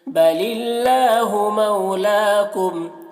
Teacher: اللہ کو باریک پڑھیں گے، مولاکم لام میں کھڑا زبر ہے، اسے ایک الف کے برابر کھینچ کر پڑھیں گے